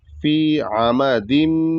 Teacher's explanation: فی عمدن، تو یہاں پر فی کو بھی کھینچنا ہے کیونکہ فا کے بعد یا ساکن ہے تو ہلکا کھینچا جائے گا ایک الف کے برابر